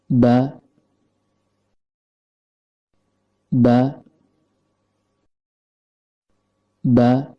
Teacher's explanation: Huruf ba keluar dari tempat pertemuan antara bibir bawah dengan bibir atas dan kondisi lidah dalam keadaan normal.